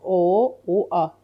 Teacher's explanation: A dodaqlanmır. Amma o ilə U dodaqlanır.